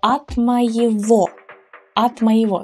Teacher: you may have noticed that г is pronounced as в.